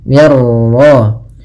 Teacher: Idgham itu memasukkan, maka masukkan nun ke ra sehingga suara nunnya hilang. Yang di sini idghamnya idgham kamil.